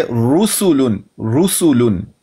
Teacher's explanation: रा पर अगर पेश है तो रा फिर भी मुफखम पढ़ेंगे।